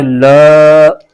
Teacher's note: لام پر کھڑا زبر ہے، اس کو ایک الف کھینچ کے پڑھیں گے۔